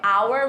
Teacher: você na verdade não pronuncia o H